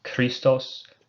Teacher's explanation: key it's a another one of these aspirated or breathy consonants you can pronounce it like a k but try to put in the extra effort to make it more like a k h sound